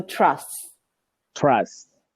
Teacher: trust without pronouncing the T at the end